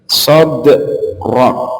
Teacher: daknya itu dipantulkan, setelah itu langsung ke huruf ro-nya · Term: qalqalah